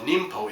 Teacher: the n Sound changes to an M sound in front of M an m a p or a b